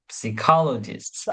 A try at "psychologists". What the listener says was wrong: Nope. The P is silent. Psychologist, psychology, psychological, etc.